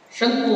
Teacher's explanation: ಮಹಾಪ್ರಾಣ ಅಲ್ಲ ಕ ಅಲ್ಲ ಕ ಅಲ್ಪಪ್ರಾಣ